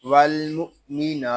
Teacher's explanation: نون کو ہم ایک الف تک کھینچ کر پڑھیں گے کیونکہ نون کے اوپر کھڑا زبر ہے